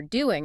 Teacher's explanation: The ing sound at the end of doing, that sound you make at the back of your throat, is often shortened to just an in sound.